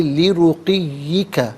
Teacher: را پر پیش ہے، را کو پر کر کے پڑھا جائے گا، اور رکیں گے تو لی رقیک پڑھیں گے۔